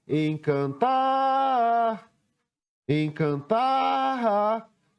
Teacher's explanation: Qual foi a sílaba que eu pronunciei com mais intensidade? Foi o tar. E a posição dessa sílaba foi a última sílaba a ser escrita. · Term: sílaba tônica